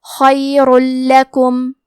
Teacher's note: خا کی ادائیگی حلق کے اوپر والے حصے سے ہے، خا حروف تفخیم میں سے ہے تو ہم یہ حرف کو بھاری آواز میں پڑھیں گے. آخری میں را پہ تنوین پیش ہے پھر حرف اللام آتا ہے. · کلمت لکم، لام حروف الادغام بغیر غنہ میں سے ہے تو ہم تنوین کو لام میں ملا کے بغیر غنہ سے لیکن تشدید کے ساتھ یہ حکم کو ادا کریں گے